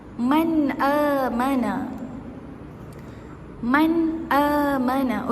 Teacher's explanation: Dengan kita menjelaskan ataupun kita terangkan sebutan nun. Sebutan nun tu kita terangkan tanpa kita dengung. Tak perlu dengung. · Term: izhar